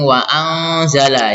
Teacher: nun matinya disamarkan dan berdengung